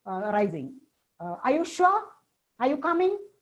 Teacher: Then yes, no questions. Questions for which the answer is either yes or no. Rising.